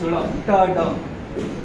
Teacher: उसमें ट ड रेट्रोफ्लेक्स साउंड है